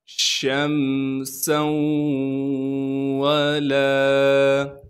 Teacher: شین کی آواز کو صاف کر کے ادا کریں گے، پھر شین کو میم سے ملائیں گے بغیر غننے کے اس لیے کہ میم ساکن ہے۔